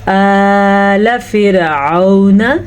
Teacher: हमज़ा के ऊपर खड़ी ज़बर है तो हमने हमज़ा को खींच के पढ़ा